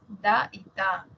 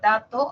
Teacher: en la tercera tenemos los dentales da y ta por ejemplo la palabra dato